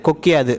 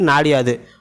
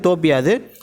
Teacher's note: இந்த ஒரு மாத்திரை அளவில் குறுகி ஒலிக்கும் இகரம் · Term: குற்றியல் இகரம்